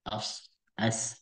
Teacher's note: ujung lidah bertemu dengan gigi seri bawah itu ada sofi